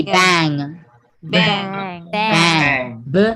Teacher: Voice and nasal velar stop. This is ng.